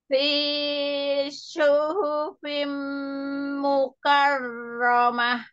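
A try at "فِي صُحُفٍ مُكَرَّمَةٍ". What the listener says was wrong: Fi-nya jangan kepanjangan. Fi suhufim mukarramah. Fi suhuf mukarramah. Tim itu di dengungnya panjang. Iya, panjang.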